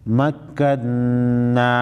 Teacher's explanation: नून मुशद्दद पर गुन्ना होगा